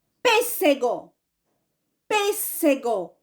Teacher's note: a sílaba mais forte é a antepenúltima. Não é a última, não é a penúltima, é a antepenúltima, tá certo? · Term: proparoxítona